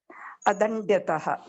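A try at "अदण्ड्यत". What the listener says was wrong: Adandyaha. Adandyaha. Ta nasti. Kim ityukte, if you go back to pat dhatu, it is not apatthataha, it is apathaha. Pat plus aha. So dand plus aha, dandaha, adandaha.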